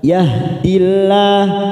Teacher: Kita baca tarqiq tipis karena sebelumnya ada kasroh.